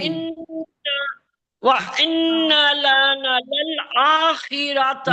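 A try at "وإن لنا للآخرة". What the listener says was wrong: नहीं नहीं नहीं नहीं नहीं नहीं, ये आपने यहाँ तक तो सही पढ़ा, नून को नहीं खींचा, इसको अलिफ मद्दा है ना इसके साथ, इसको खींचना है। वह इन्ना लना, लना। आखिर रता नहीं है, कितनी बार बताया आपको, रॉ को मोटा पढ़ना है जब जबर या पेश हो।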